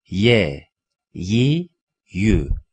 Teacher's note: Dilin ortasıyla üst damağın ortasından çıkar.